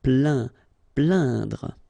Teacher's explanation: when you combine this A-I-N, you will get the sound un. So really, this nasal sound in your nose.